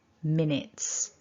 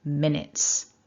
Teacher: don't say the you it's just a short it in minutes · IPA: /ɪ/